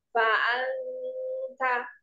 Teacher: Jadi dengungnya itu di awal saja. Pada saat huruf di nunnya.